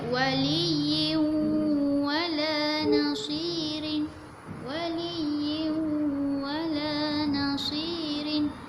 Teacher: Kita buang satu baris supaya senang untuk kita masukkan ke dalam huruf waw. Untuk dengung ni, huruf waw ni kita mesti muncungkan mulut kita. Pastikan lidah kita tak kena lelangit.